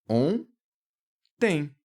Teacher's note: o ON, essas duas letras, fazem apenas esse O nasal. Então, eu tenho ali um dígrafo vocálico.